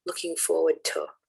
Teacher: So if you think of, for example, looking forward to, the to is rarely, if ever, emphasized. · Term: unstressed monosyllables